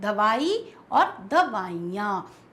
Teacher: जो ई होती है वो उसका प्रेशर यानी कि उस पर बलाघात जो होता है वो कम हो जाता है, तो वो बहुवचन जब बनती है तो दवाइयाँ हो जाता है।